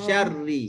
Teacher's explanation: Tak perlu masukkan alif antara shin dengan ra tu.